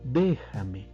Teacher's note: tiene la mayor fuerza de voz en la antepenúltima sílaba por ejemplo déjame vemos que está en la antepenúltima sílaba y